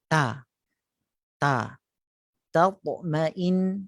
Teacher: bahagian pangkal lidah, bahagian yang dekat dengan anak tekak tu dinaik tinggi